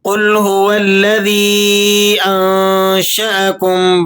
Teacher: مد منفصل ادا ہوتی ہے جس کی مقدار 3 سے 4 الف ہے۔ آپ نے اسے 3 سے 4 الف کھینچ کر پڑھنا ہے۔